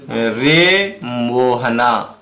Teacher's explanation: इनके उच्चारण में एक मात्रा का जो है तिगुना समय लग रहा है, ठीक है। तो ये प्लुप्त स्वर हैं।